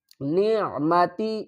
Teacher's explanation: عین کو حلق کے درمیان والے حصے سے ادا کریں گے